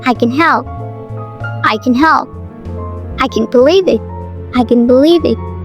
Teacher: in can, the vowel is shorter and less nasalized, usually unstressed.